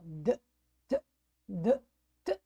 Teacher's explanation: o D, ele dá um pulinho na garganta, por isso ele tem a mãozinha. E o T, isso não acontece.